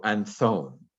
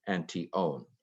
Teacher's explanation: the tau also aspirates it goes breathy so anthon is just easier to say than anti-own uh and